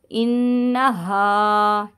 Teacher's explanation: نون میں شدت کا گنہ کر کے الف مدہ کو ہلکا سا کھینچیں گے